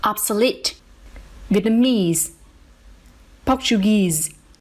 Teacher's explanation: secondary stress on the first syllable